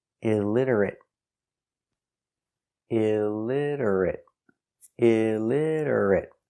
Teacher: the t is pronounced with a d between vowels